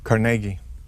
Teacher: emphasis on the middle syllable